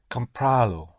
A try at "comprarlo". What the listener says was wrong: Comprarlo is right.